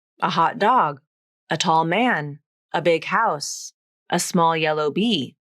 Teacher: stress tends to fall on the second word of the descriptive phrase or it may not have any special stress at all